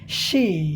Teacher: जब हम इसका उच्चारण करते हैं तो होता क्या है कि हमारी जीभ जब उठती है ऊपर, यह भाग जब ऊपर उठता है तो बगल में दांत के किनारों को हमारी जीभ का किनारा जो है टच करता है, लेकिन इसमें यहाँ गले में कंपन नहीं होता है